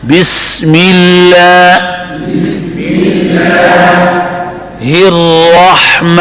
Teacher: اب را کو پر پڑھنا ہے اور ہا کو درمیان حلق میں